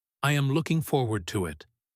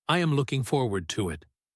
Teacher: Notice how the words connect. Looking and forward almost sound like one word.